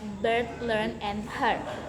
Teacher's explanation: mid-central vowel, often referred to as the nurse vowel in traditional British phonetics